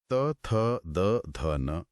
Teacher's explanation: जब तक जीभ दांतों के पिछले हिस्से को नहीं धकेलेगी त की आवाज नहीं आ सकती। अगर मान लीजिए किसी व्यक्ति के आगे के दांत टूट जाएं तो उसके लिए त या थ का स्पष्ट उच्चारण करना लगभग असंभव हो जाएगा, है ना? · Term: दंत्य, दंते ध्वनियों